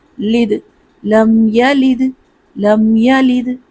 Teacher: دال حروف قلقلہ ہے تو دال پر آواز پلٹے گی، قلقلہ ہوگا